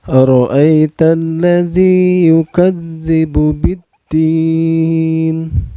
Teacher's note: Ro-nya ini tafhim ya, atau tebal, karena ro berbaris patah ya.